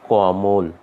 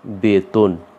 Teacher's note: এই মধ্য অ এর উচ্চারণ অ এর মতো না হয়ে এটা উচ্চারণ হবে ও এর মতো। এই জন্য আমরা উচ্চারণ করব কমল।